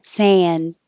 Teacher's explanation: Again, you won't hear the D. I'll just hold it in the ND position.